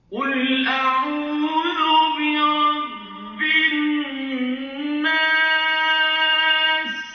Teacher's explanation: ketika binnas ditekan dulu, kemudian nasnya itu panjang, jadi mad arid disukun